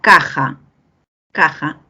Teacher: ambas consonantes tienen cierre total en la salida del aire